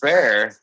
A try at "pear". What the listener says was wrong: No, pear, not bear. pear.